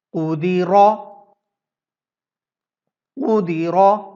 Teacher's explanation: اس word میں آپ دیکھ سکتے ہیں کہ را کے اوپر موومنٹ ہے، اس لیے را کو ہم نے موٹا کر کے ادا کیا